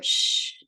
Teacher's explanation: voiceless sh but put your hand here sh no vibration